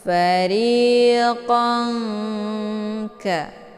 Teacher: Nun posisinya ujung lidah, sementara kaf posisinya pangkal lidah agak sedikit turun ke bawah. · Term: ikhfa ab'ad